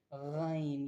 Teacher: गन की आवाज में झुनझुराहट, वाइब्रेशन और भारीपन होता है। यह गले से निकलने वाली एक भारी और गूंजदार आवाज होती है। जैसे पानी में गरगराहट या गुस्से वाली आवाज। · غین کی آواز میں جھنجھلاہٹ، وائبریشن اور بھاری پن ہوتا ہے۔ یہ گلے سے نکلنے والی ایک بھاری اور گونجدار آواز ہوتی ہے، جیسے پانی میں غرغراہٹ یا غصے والی آواز۔